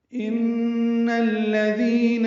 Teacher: ان میں نون مشدد پہ غنہ ہے، اس کو الذین کے لام سے ملانا، دال نرمی سے پڑھنا، دی یا مدہ ہے تو حرکات لمبا کرنا ہے.